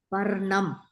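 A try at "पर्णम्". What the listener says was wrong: Parnam. Very good.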